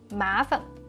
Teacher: Perfect Northern neutral tone on 烦